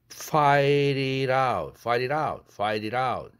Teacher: 또 fight it out, fight it out, fight it out 이렇게 되죠. t가 두 개나 다 플랩돼야 되는 환경입니다